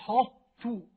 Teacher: يجيب صفة الطاء صفة الاستعلاء ثم ينزل على التاء